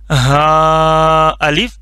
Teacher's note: ये गले के जो एंड वाला हिस्सा है सीने की तरफ वाला, वहां से निकलता है। इसको पतला नहीं कर लेना और इसको मोटा नहीं पढ़ लेना। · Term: मोटा वाला हा